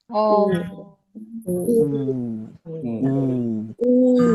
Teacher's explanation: ketika domah itu dikumpulkan bibirnya dalam artian bibir kita kumpulin kayak gini.